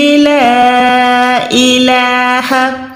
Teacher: لام الزبر لا کو جو ہے کم سے کم 2 سے 3 سیکنڈ لمبا کر کے ادا کریں, کیونکہ چھوٹی مد ہے.